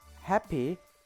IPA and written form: hæpi (happy)